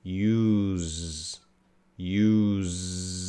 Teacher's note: it's making the Z sound so it is voiced it's a vibration